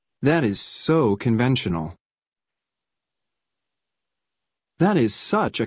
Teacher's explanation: colocamos un acento extra, una acentuación o entonación extra en so y such para darle énfasis a la frase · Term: emphatic stress